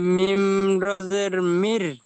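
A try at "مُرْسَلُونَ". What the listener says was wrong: মিম র জের নেই, দেখেন পেশ রয়েছে, মিম র পেশ মুর।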